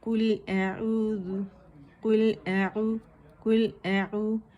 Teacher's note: حمزہ کی آواز واضح ہونی چاہیے، عین نہیں بننا چاہیے